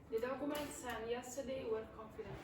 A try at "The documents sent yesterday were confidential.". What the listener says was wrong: Okay, so again, pause here, pause there, and then say the rest. So what you need to do is when you're reading these sentences, pause, so stop here, and then stop here. Give yourself a little bit of time. Do not say the documents sent yesterday were confidential. Generally you would say the documents.